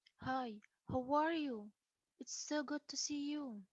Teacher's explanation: can have more emotion usually excitement and that's what we you you may hear a rise fall in a very friendly greetings